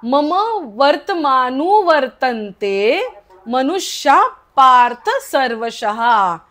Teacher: आता मनुष्याचा विसर्ग पूर्ण बोलायचा नाहीये, अर्धा बोलायचा आहे. का? कारण क, ख, प आणि फ हे 4 असतील तर विसर्गाचा उच्चार अर्धा होतो.